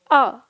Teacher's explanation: जब हम इस अ का उच्चारण करते हैं, ये एक ही स्वर है हमारा, तो जीभ का जो ये मध्य भाग है ये थोड़ा सा चौड़ता है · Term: मध्य स्वर